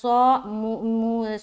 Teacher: صاد کو منہ بھر کر نکالیں گے موٹا